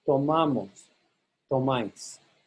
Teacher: So in the boot, you hold back and you stress that to syllable. Outside the boot, in nosotros and vosotros, you stress the ma syllable.